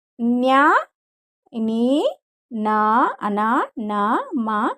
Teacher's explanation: అనునాసికములు ముక్కు సహాయం చేత పలుకబడతాయి